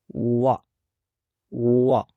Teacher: اس طرح تیسرا حرف جو ہے وہ ہے واو، اور اس کی ساؤنڈ ہے وا، اور اس کا مخرج ہے دونوں ہونٹوں کو لپس کو گول کرتے ہوئے سرکل بناتے ہوئے اس کی ساؤنڈ کو ادا کریں گے